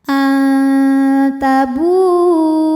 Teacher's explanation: Karena nun sukun menghadapi huruf ta, maka bunyi nun disamarkan siap-siap menuju makhraj huruf ta disertai bunyi dengung. Dengungnya sedikit karena huruf ta ini makhrajnya masih dekat dengan nun. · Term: ikhfa aqrab